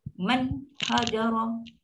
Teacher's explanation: So bila setiap kali nampak nun mati dia cepat je lah. Man dia memang ada dengung tapi sikit sangat. Satu harakat atau kurang.